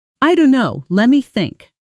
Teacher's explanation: let me collapsing into lemm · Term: connected speech pattern